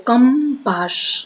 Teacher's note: આપણે ટંકો કરીને બોલવો પડે છની ઉપર ફૂલ ભાર દઈને બોલવો પડે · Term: તીવ્ર અનુસ્વાર